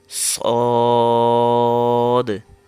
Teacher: یہ حروف مستعلیہ میں سے اس کی آواز موٹی آئے گی